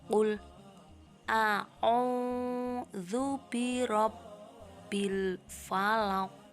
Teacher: Pada akhir ayat terdapat bacaan qalqalah kubro, yaitu pada lafal al-falaq. Maka cara membacanya haruslah memantul.